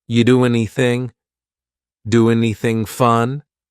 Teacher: we sometimes drop the A and we're going to push those two together because there's two n sounds side by side